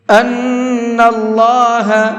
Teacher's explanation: فَاعْلَمُوا أَنَّ اللَّهَ عَزِيزٌ حَكِيمٌ، یہاں پر یہ چھوٹا مد ہے تو اس چھوٹے مد کو 1 سے 3 الف کے برابر کھینچ کر کے پڑھیں گے۔ ان اللہ، نون کے اوپر تشدید ہے تو یہاں پر غنہ کریں گے، اور اللہ کے لام کو منہ بھر کے پڑھیں گے، اس لیے کہ اللہ کے لام سے پہلے زبر ہے۔